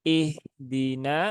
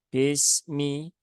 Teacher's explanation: harakatnya kasrh Nah maka semua huruf hijaiah yang harakatnya kasrh maka pastikan dia bunyinya adalah i ya bunyinya i bukan berbunyi e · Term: meringis